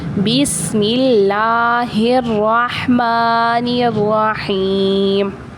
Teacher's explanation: یا مدہ کا قاعدہ ہو رہا ہے اور جو میم ہے وہ ساکن ہو جائے گا